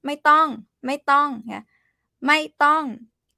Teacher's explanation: ไม่ต้อง both falling tone